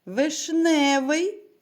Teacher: у слові вишневий наголос падає на другий склад